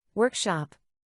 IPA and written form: ˈwɜrkˌʃɑp (Workshop)